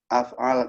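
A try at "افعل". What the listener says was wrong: If'al. If'al bukan af'al. if'al itu bukan, membahasnya if'al bukan af'al ya.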